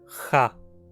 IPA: xa